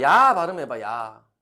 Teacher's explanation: 우리는 야라고 발음하는 것 같지만 사실은 이하고 아를 동시에 발음하는 거야. 이라고 발음하고 나서 0.0000001초 만에 아라는 걸 발음하는 거야. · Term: 이중모음